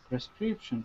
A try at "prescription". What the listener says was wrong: Are you saying per?